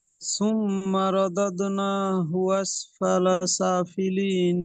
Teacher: নুনটা খাড়া জাবর আছে, টান হবে, টান দিয়ে পড়ুন। · তাসদিদ মিমের উপরে থাকলে এটি ওয়াজিব গুন্না, একে গুন্না করে পড়তে হবে।